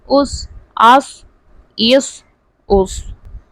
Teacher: حمزہ صاد زبر اس حمزہ صاد زیر اس حمزہ صاد پیش اس اس. صاد جو ہے پر پڑھا جائے گا، یعنی حروف مستعلیہ ہے تو ہمیشہ پر یعنی موٹے پڑھے جاتے ہیں